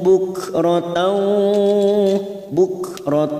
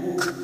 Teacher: Kaf sukun mempunyai sifat Hames maka bunyinya buk